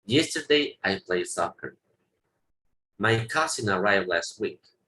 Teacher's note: estoy pronunciando los verbos en pasado como en presente. Está escrito el ED, pero no lo estoy pronunciando.